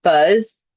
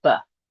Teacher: That buzz went to buh. That z sound at the end was completely taken off. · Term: final consonant deletion